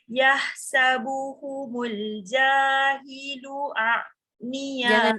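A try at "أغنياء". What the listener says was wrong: Jangan jadi ain. Au. Ya. Aghniya kan ain atas. Ya, aghniya.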